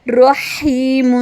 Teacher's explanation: ہا کے ساتھ یا مد ہے، 2 حرکے کے برابر